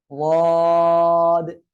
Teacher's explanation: উচ্চারণ হবে জিহ্বার গোড়ার কিনারা, উপরে মাড়ির দাঁতের গোড়ার সঙ্গে লাগিয়ে উচ্চারণ হবে।